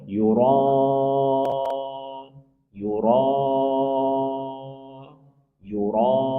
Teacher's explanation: ada huruf mad yaitu alif bertemu dengan hamzah dalam satu kata. Maka mad wajib muttasil. Baca 4 sampai lima harakat.